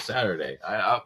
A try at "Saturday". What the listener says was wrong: Saturday. Saturday. sound like you're saying seriously without the S at the other end.